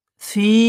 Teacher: ইন্নাহা আলাইহিম মুসাদাহ, ইন্নাহা আলাইহিম মুসাদাহ, ইন্নাহা আলাইহিম মুসাদাহ। ফি, এটা ইয়া মাদ্দা এক আলিফ টান হবে